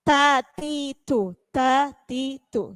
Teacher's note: Jadi harus kuwirat, rot, ya sedikit saja, jangan terlalu banyak rot, ya atau rot tidak ada hamas. Jadi ada hamasnya sedikit ketika pengucapannya huruf ta,